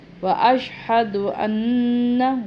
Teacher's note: غنہ کریں گے، نون کے اوپر شد ہے